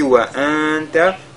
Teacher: nous sakin a suivi de la lettre ta, on fait al-ikhfa